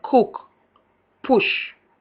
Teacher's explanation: Short U, back, close, lax, and rounded